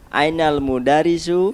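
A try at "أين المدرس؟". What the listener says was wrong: Ya, mudarrisu. Ra-nya ditasdid.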